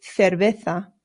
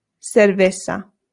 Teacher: the C's in Spanish make a th sound, but the Z's do as well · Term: Spain pronunciation